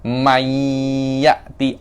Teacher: Kan aslinya man ya'ti. Cuma nunnya masuk ke ya.